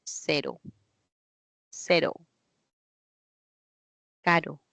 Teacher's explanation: la vibrante simple un solo toque